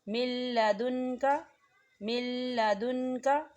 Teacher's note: نون ساکن کے بعد لام آ رہا ہے، لام کے اوپر تشدید ہے اور یہاں غنہ نہیں ہوگا. ہم میم کو جو ہے لام کے ساتھ ملائیں گے اور نون کو جو ہے لام کے اندر مدغم کریں گے.